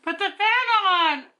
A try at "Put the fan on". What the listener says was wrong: Not fan on. Are you a singer holding out that note? On.